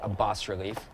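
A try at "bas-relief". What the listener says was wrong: i don't think you pronounce the s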